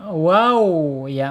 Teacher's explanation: secara makhraj ada di asyafatain proses dari belakang sampai ke depan. Wow monyongin ya.